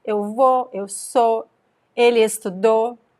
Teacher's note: The O sound is strong, is a stressed vowel, and the U sound is actually weak. It's considered a semi-vowel here.